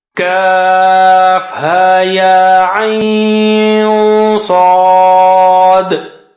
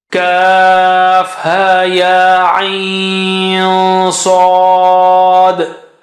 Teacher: this is a Nun Sakina followed by Saad means you have to hide Nun Sakina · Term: ikhfa